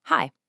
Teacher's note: you'll feel your tongue start down in a low position and then glide seamlessly across your mouth up into that high front position. You're creating a complex sound strictly out of physical movement.